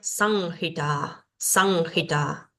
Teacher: Entonces, esta palabra sería sanjita, sanjita. Esto no suena como M, no suena como N, sino que se nasaliza la A previa. San, san, ji, la H suena como una J suave y ta, ta. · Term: anusuara